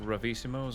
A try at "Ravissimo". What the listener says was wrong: Ravissimo. There's no O.